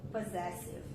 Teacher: primeira sílaba do SS, som do Z mesmo, Zé. E schwa no início, ó. Tá com a letra O aqui, só que é com o somzinho do schwa.